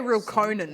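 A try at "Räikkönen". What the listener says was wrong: two I's, there's no L.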